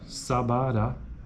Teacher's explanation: a segunda vogal é isenta de acento